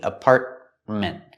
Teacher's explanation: With the word apartment, we have two T's. The first T in the middle is a stop T